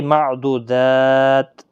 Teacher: ایک لمبی تا ہوتی ہے، وقف میں تا ساکن پڑھتے ہیں، جیسے معدودات سے معدودات تا ساکن ہو جاتا ہے۔